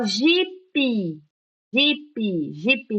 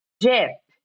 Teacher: Não coloca vogal aqui depois do P